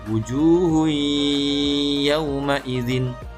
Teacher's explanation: suara n-nya itu hilang diganti dengan suara huruf selanjutnya yang didengungkan. · Jadi bunyi n-nya hilang, diganti dengan huruf ya yang disukunkan dan ditahan dulu kira-kira 2-3 harokat. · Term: idgham bi gunnah